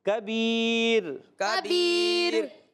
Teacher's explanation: بعض بچوں نے کبیر پہ را کو پر کیا، پر نہیں کرنا، باریک کرنا ہے